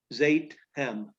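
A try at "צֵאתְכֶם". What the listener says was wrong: No, it's not a Z. It's a TZ. It's like the middle sound in pizza. Seitchem. Seitchem, that's a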